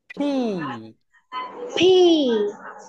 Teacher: Upper lip and lower lip ফি। দুইটা ঠোঁট একসঙ্গে টাচ করবে